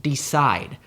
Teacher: These are the types of poetic feet. An I am is a pair of syllables where the first is unstressed and the second is stressed